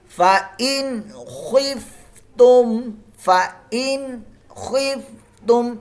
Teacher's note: यहां इजहार का कायदा कोई गुना नहीं करना